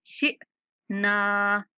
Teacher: शीन के बाद साकिन हमजा है, झटके के साथ पढ़ना है।